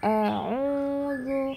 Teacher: Makhraj huruf hamzah ada di area pita suara, tenggorokan bagian bawah.